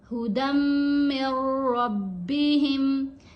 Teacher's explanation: दाल को हम मीम के साथ मिलाएंगे, ठीक है, फिर मीम को रा से मिलाएंगे। ये जो नून है ये यहाँ पे खामोश है, क्योंकि जब भी जज्म और तशदीद दोनों मूव्स इकट्ठी आ जाती हैं तो जज्म वाला जो हरफ होता है वो खामोश हो जाता है, मुशद्दद हरफ पढ़ा जाता है, ठीक है।